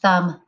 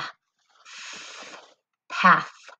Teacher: You'll hear that unvoiced TH sound. Your teeth should have your tongue in between them. TH, thumb. I can mark up that TH sound.